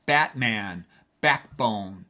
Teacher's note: that has double oomph to it, double stressed word